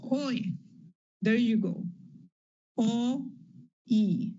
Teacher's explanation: You can see the tongue moving from the back to the front of the mouth.